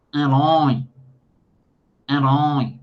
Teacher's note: o som acaba passando para o nariz também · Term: fanho